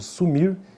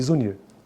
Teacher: O de S, que seria o S, não é sonoro, ó, e o de Z, o de zebra.